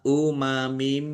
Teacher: Kasroh tanwin bertemu dengan huruf mim bacaan idgham bi gunnah masuk dengan mendengung, yaitu mendengung mim. Ditandai mimnya ada tasdidnya.